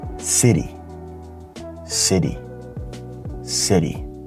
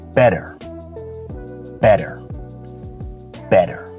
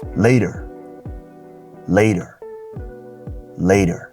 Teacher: So you don't hear a hard T, you hear a flapped T. So water becomes water, water.